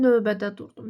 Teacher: Yəni, V düşmür. Ö uzanmır.